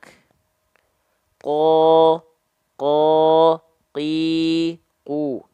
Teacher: huruf qaf itu dilafalkan ya dari pangkal lidah yang disatukan dengan langit-langit yang warna pink. Langit-langit yang warna pink ini adalah langit-langit yang lunak.